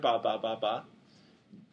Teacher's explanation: So ba is made at the front of the mouth, right? With putting your lips together,